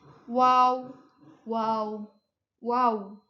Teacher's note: wau syafawi dari bibir mutawasit sedang majhur